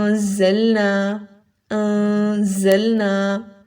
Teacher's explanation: زا کو سین کی بہنا سمجھ لیں، سیٹی کی آواز آئے گی اس میں، ٹھیک ہے، جیسے سین میں سیٹی کی آواز آتی ہے اسی طرح سے زا پڑھتے ہوئے بھی سیٹی کی آواز نکلے گی